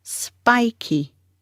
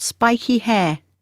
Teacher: Stress on the first syllable, spy. The second syllable is key, spiky.